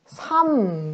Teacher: 이 3을 발음하면 3 이렇게 발음이 되죠. 표기는 리을, 미음 이렇게 겹받침으로 표기하지만 발음을 해봤더니 미음으로만 발음이 돼요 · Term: 자음군 단순화